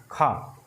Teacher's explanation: खा बोलिए तो ज़्यादा आप मुंह से हवा निकल रही है, आपकी हथेली पर खुद ही हवा जो है आप महसूस कर पाएंगे। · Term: महाप्राण व्यंजन